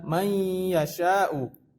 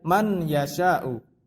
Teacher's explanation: Jadi nun tidak dibaca, langsung lanjut ke huruf selanjutnya. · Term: idgham bi gunnah